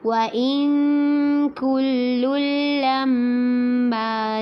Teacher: وَإِن پہ اخفا کرنا ہے، کاف کو باریکی سے پڑھنا ہے اور لام کو جب اگلے لام کے ساتھ ملائیں گے تو یہاں پر ادغام ہوگا. کل لما اور میم مشدد پہ غنہ کرنا ہے.